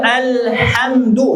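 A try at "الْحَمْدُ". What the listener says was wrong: Hati-hati jadi alhamdu. Nah, beda maknanya segala puji, kehancuran. Alhamdu pakai ha, pangkal tenggorokan jadi kehancuran.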